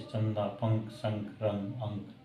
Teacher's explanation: अनुस्वर में किससे होता उच्चारण सिर्फ नाक से